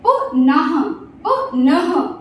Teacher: जब अह की मात्रा बोलेंगे तो लिटिल बिट साउंड ह का आएगा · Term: विसर्ग की मात्रा